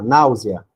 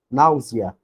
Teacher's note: O E com som de I vai ser uma semivogal.